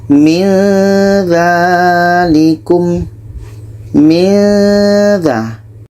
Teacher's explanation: ketika sebut huruf nun kita sudah merasakan huruf dza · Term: ikhfa Hakiki, ikhfa hakiki